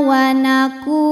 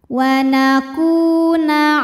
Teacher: Hukumnya mad tabi'i dhahiri, sebab ada waw sukun didahului harokat dhammah, maka huruf kaf panjang 2 harokat.